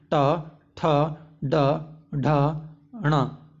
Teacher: मूर्धन्य व्यंजन वे हैं जिन्हें बोलने हमारे जीभ मूर्धा में टच होता है। और मूर्धन्य व्यंजन कौन कौन से हैं, ट, ठ, ड, ढ, ण।